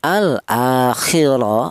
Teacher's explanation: Huruf ra ini berharakat fathah ini dibaca tafhim atau dibaca tebal ya. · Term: dibaca tafkhim